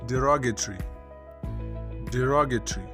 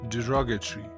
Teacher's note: The stress is on the second syllable, so you'd say derogatory.